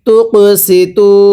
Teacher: এরপরে তা কপ পেশ তুক, সিনজের সি, তুক সি, তাও পেশ তু। এখানে এক আলিফ টানতে হবে, পেশের পরে ওয়াও সাকিন হইলে এক আলিফ টানিয়া পড়তে হয়।